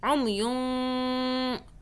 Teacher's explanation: نون کو ایسے چھپانا ہے کہ آپ کی زبان اوپر تالو پہ ٹچ نہ ہو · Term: اخفاء